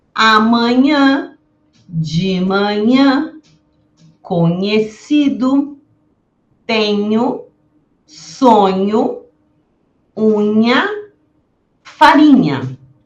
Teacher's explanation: o dígrafo NH, que tem essa sonoridade parecida ao N do espanhol. E também pede uma pronúncia nasalada.